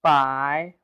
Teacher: with the second tone rising tone